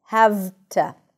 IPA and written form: hæv.tə (have to)